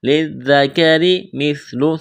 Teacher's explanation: ذال کے اوپر تشدید ہے، لام کو ذال کے ساتھ ملانا ہے ، پلس کرنا ہے، ذال کو نرم کرنا ہے، جلدی پڑھیں